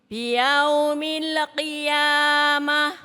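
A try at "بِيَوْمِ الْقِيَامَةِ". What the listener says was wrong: Lidahnya lihat Bu, lidah. Biyaumil. Pakai U. Jangan ke O. Itu namanya bacaan madlin.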